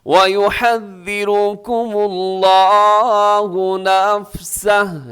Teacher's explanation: یہاں لفظ اللہ کو موٹا رکھیے گا